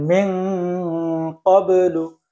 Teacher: নাকের ভিতরে একটু মোটা হয়ে যাচ্ছে